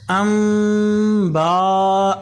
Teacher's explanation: نون کی جگہ میم گنہ سے پڑھیں گے، ٹھیک ہے۔ تو ہم میم کو پڑھیں گے، میم کے اوپر گناہ کریں گے، نون کو چھوڑ دیں گے، کس طرح؟ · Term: اقلاب